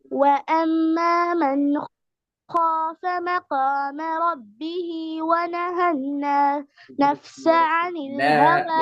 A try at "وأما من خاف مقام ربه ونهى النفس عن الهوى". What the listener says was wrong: ونهى திக்கல் நிக்கப்படாது திக்கல் முக்கல் நிக்கப்படாது مقام அதில் நிக்கப்படாது